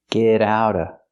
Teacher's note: We hear the T and get and the T and out pronounced as fast D's.